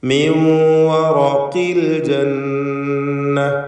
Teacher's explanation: റാഇന് തഫ്ഖീം കൊടുക്കണം, ഖാഫിന് തഫ്ഖീം ചെയ്യണം. അതിന് കസ്ര ആയതുകൊണ്ട് കുറഞ്ഞ തഫ്ഖീമാണ് അതിനുണ്ടാവുക.